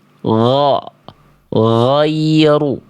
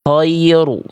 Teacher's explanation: Ghoin enggak boleh keluar nafas, nantinya jadi huruf kho.